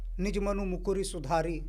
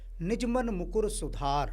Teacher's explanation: जब भी ह्रस्व उ और ह्रस्व ई की मात्रा आती है अंतिम शब्द में उसका लोप हो जाता है